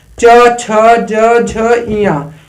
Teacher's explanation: तालव्य जो तालु से बोला जाता है, जो च वर्ग होता है, च छ ज झ इया, जो च वर्ग होता है ये तालव्य व्यंजन होता है।